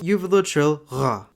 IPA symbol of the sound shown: ʀ